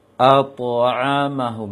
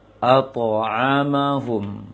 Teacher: Penting dia menebal, mengarah ke o. Ato, jangan ato juga, tapi separuh dia. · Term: to sukun